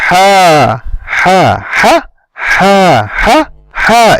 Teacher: It takes the time of two has.